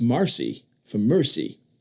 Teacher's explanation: pronounced the E before R like a as Marcy for mercy